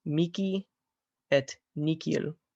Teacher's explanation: Well, ha equals ha est ka in verbis mihi et nihil. So the H makes a K sound in those two words.